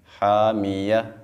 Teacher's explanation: last میں ہم نے ہا کو واضح کرنا ہے